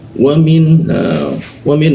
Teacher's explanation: Wamin nun mati bertemu ha ya, jangan didengungkan. Min jelas pakai n dia.